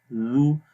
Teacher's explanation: اس کے بعد ہے زال، زال کو نرم پڑھتے ہیں، زو، زبان کی نوک کو اوپر والے دانتوں کے کناروں پر لگاتے ہیں تو زال کی آواز پڑھی جاتی ہے